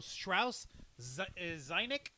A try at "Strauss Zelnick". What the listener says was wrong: Stra- no, it's a Zell. It's an L. Strauss Zelnick.